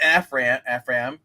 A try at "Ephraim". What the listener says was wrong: Ephraim. It's Ephraim. It's a long E.